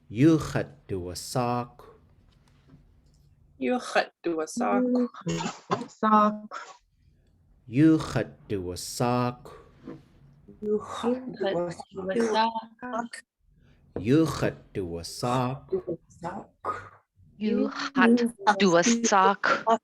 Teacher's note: ends with this KW. That means there's this little puff of air at the end. So to say this one, we say iduwasáakw.